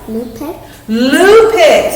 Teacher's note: So he made a oo sound. That's a long U sound.